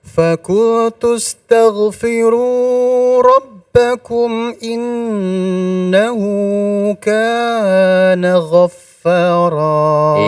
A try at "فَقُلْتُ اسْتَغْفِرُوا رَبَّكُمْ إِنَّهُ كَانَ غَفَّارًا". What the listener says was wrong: Iya, kurangi ya. 2 harokatnya dikurangi sedikit.